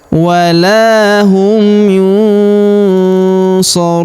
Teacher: Huruf nun sukun bertemu huruf sha, maka nun sukunnya melebur ke huruf sha, kita baca dengung dan samar. Dengungnya kita tahan 2-3 harokat.